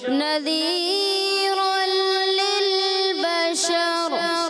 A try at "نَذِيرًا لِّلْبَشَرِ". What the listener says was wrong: آپ نے جلدی کی نذیر یہ کیا ہے آپ ٹیمپو خراب کر دیا نذیرا للبشر